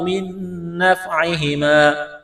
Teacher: نون ساکن کے بعد اگلی نون مشدد ہے تو نون کو نہیں پڑھیں گے، نون کا نون میں ادغام کریں گے غنے کے ساتھ